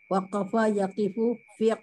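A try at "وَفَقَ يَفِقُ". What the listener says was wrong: Wafako bukan waqafa. Ya.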